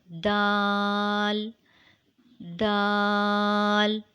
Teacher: and Dal have a similar shape Dal is Allied sound later it is pronounced when the tip of the tongue goes towards the root of the top front two teeth